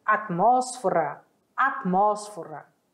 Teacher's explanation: Olha o T que quase não sai.